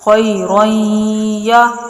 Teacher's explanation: را کو یا میں داخل کرتے ہوئے غنہ کر کے پڑھیں گے۔ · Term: ادغام بالغنہ